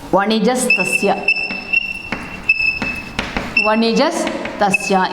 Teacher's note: In the place of visarga, we added here sakara. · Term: visargasya sakara adeshaha